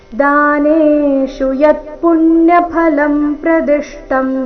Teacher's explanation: ದ ಮತ್ತೆನೆ ಇವೆರಡೇ ಅಕ್ಷರ ದೀರ್ಘ ಮುಂದೆ ಬರುವ ಎಲ್ಲ ಅಕ್ಷರಗಳು ರಸ್ವ ಇವೆ